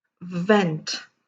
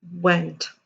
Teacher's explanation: cannot disregard so remember bite your v's and kiss the w's v upper teeth and lower lip rounded lips for the letter w